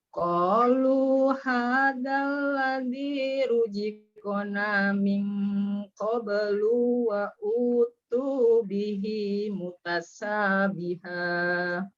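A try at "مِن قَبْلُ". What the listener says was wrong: Diulang min qablu, lu-nya pendek.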